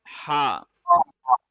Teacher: ہا گلے کے درمیان سے نکلتا ہے جہاں پہ ہڈی ہوتی ہے